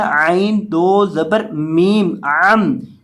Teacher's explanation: اب یہاں آپ نے دوبارہ پھر گنہ کرنا ہے چھوٹی میم کے اوپر، یعنی عین کے اوپر دو زبر کی تنوین ہے، اس کو پڑھنا ہے عین دو زبر میم عم، یعنی عین دو زبر عن نہیں، عین دو زبر میم عام پڑھیں گے، یعنی عین کے بعد میم پڑھا جائے گا، عین کو میم کے ساتھ ملا کر پڑھا جائے